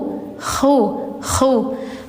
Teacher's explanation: ada kayak suara dengkuran ngorok dikit